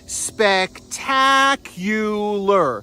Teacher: go up on that a and there's a hidden y right after the C